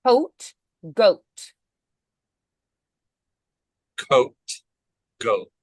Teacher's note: K is unvoiced, G is voiced.